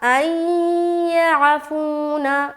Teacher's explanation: یہاں پر نون ساکن کے بعد حرف یا آ گیا تو یہاں پر غنے کے ساتھ ادغام کریں گے. ملانا جو ہے غنے کے ساتھ ہوگا اور یہ کہلاتا ہے ادغام ناقص کا غنہ.